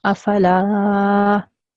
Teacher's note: You have to make it a bit long. So instead of saying la, like quick and 1 second long, you have to make it long for 2 seconds. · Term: alif mad